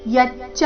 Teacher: ಯಚ್ಚ ಯ ಮೇಲೆ ನೈಸರ್ಗಿಕ ಆಘಾತ ಮುಂದೆ ಚ ಕ್ಕೆ ಚ ದ ಒತ್ತು ಬಂದ ಕಾರಣ ಯಚ್ಚಾನ್ಯದ್ ನ್ಯ ಆದ